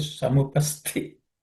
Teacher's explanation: Samupasthitam, the Tha in this is aspirated.